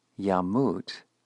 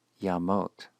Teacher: So in the indicative, yamut, he will die, we find that the shuruk reduces to a holum, and the jussive is spelled yamot.